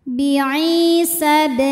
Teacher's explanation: Kemudian ada hukum qalqalah sugro, sebab huruf qalqalahnya sukunnya sukun asli dan ada di tengah bacaan, maka dibaca memantul dengan pantulan yang kecil